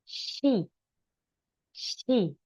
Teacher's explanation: lidah bagian tengah itu agak menempel ke langit-langit she. Jadi seperti huruf S. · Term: X